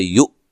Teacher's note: حمزہ کو جھٹکے سے پڑھنا ہے